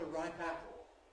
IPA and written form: ə ˈraɪp ˈæpl̩ (a ripe apple)